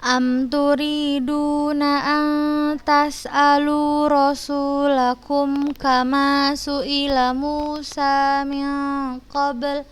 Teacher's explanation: Kita cari nun sukun bertemu huruf ta, ikhfa, bacanya samar. Kemudian min qabl, ikhfa juga dibaca samar.